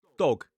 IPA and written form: dɒg (dog)